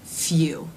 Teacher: in the first sound the lips are rounded, in the second sound they are much more rounded and closed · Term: U as in few diphthong